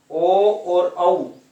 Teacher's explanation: ओ और औ इन दोनों का उच्चारण स्थान होता है कंठ और होठ दोनों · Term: कंठोष्टम